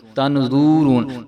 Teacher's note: بھی جو ہے ہم تنظرون پڑھ رہے ہوتے ہیں، تنظرون، تو وا کو جو ہے ہم نے بالکل بھی نہیں کھینچنا، آگے جو ہے را کو ہم لمبا کریں گے کیونکہ آگے جو ہے واو مدہ آ رہی ہے، را کو